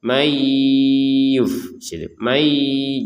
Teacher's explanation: kita masukkan nun sukunnya kepada huruf ya sehingga terbacanya may. Jadi yang awalnya terbacanya man dengan adanya huruf ya ini dimasukkan sehingga terjadinya ada perubahan cara membacanya dari man menjadi may.